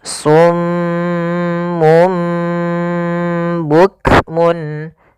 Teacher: Maka pertama ditahan dulu suara m-nya karena dibacaan gunnah. Kemudian ketika lafal mum itu langsung matikan di sini dan ditahan suara gunnahnya. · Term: iqlab